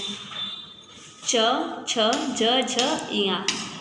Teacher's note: ये हमारे तालु से उच्चरित होते हैं, तो इसे हम तालव्य व्यंजन कहते हैं।